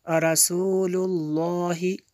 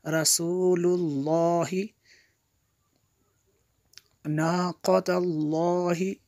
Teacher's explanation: یہاں پہ اس لفظ اللہ کو پر کریں گے کیونکہ اس سے پہلے والے لفظ پر زبر ہے. رسول اللہ، ناقۃ اللہ یہ بھی پر ہوگا.